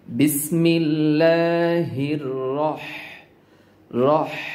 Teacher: কেননা এই হাটার নাম হায় হত্তি না। হায় হত্তি বলার সময় বাতাসের একটা সাউন্ড করতে হবে, পাশাপাশি আপনার গলা চেপে উচ্চারণ করতে হয় হায় হত্তি বলার সময়। তো বিসমিল্লাহ হির, এই হাটা হির, যে হাটা আপনার রকে ধরেছে, এই হাটা এভাবে বলতে হবে হির।